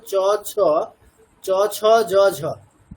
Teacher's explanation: জিভটা আমাদের মানে উপরের যে প্লেটটা আছে, মুখের উপরের যে প্লেটটা আছে সেখানকার মাঝখানটাতে টাচ করছে